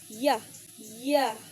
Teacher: This sound is palatal, meaning it's produced with the front of your tongue raised towards the hard pallets, the roof of your mouth. Your tongue gets close to the pallet, but not close enough to create friction. That's why y is called an approximate. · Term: voiced palatal approximant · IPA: /j/